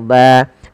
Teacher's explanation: kita waqaf maka dibaca dengan mad iwad yaitu misalkan di Sini Ban berubah menjadi ba panjang